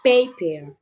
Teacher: it is produced by stopping the air flow with the lips and then relaxing it quickly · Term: consonant P